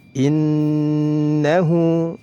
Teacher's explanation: nun gunnah musyaddadah, ditahan dua harokat, diiringi dengan gunnah. Innahu, hu dibaca dua harokat karena dihukumi mad silah qasirah, ya, jadi dinamakan qasirah.